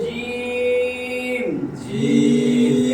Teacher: চার আলিফ টান হবে জিম। এটা পড়তে দিলে পড়তে হবে জিম জিম